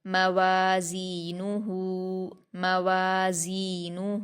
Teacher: زا پر یا مدہ ہے، اس کو 2 حرکات کھینچ کر سختی سے پڑھیں گے۔ نون پر حرکتیں جلدی پڑھیں گے، ہا پر الٹا پیش ہے، اس کو واو مدہ کی طرح 2 حرکات کھینچیں گے۔ · واو پر الف مدہ ہے، 2 حرکات کھینچ کر پڑھیں گے۔ زا پر یا مدہ ہے، اس کو 2 حرکات کھینچ کر سختی سے پڑھیں گے۔